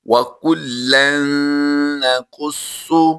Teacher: نون مشدد ہے، یہاں پر ہم نے غنہ کر کے پڑھنا ہے